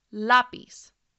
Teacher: stress is on the second to last syllable that is why the accent mark is over that vowel by